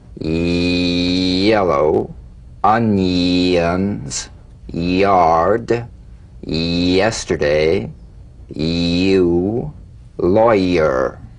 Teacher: you feel the Y buzz quickly cut off as it slides into the following vowel